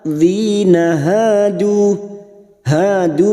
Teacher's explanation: Dzina hadu masing-masing 2 harakat kita panjangkan. Fathah diikuti alif.